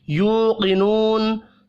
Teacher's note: 2 واو مدہ ہے, دونوں کو ایک الف کے برابر کھینچ کر پڑھیں گے. قاف حروف مستعلیہ ہے, پر پڑھا جائے گا, وقف کی صورت میں نون ساکن پڑھیں گے.